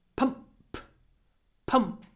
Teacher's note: in pump pump the unvoiced P Clips the M